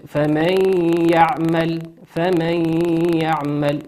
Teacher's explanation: نون ساكنة أتى بعدها حرف الياء، والياء من حروف الإدغام بغنة يغن بمقدار حركتين